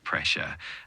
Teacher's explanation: it's pronounced pressure with the emphasis on the the first syllable like pressure